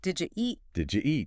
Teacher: Instead of separating did you, the D and Y sounds often combine to make a J sound.